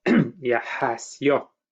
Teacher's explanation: not a vowel, a consonant, a glide, a consonant y is added before the ending o. So we have, for example, yahas, crocodile, and the plural yahasyo, crocodiles.